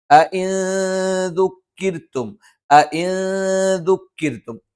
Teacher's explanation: അവിടെ ഇഖ്ഫ ആണ്, നൂനിനെ അവ്യക്തമാക്കി ഉച്ചരിക്കും.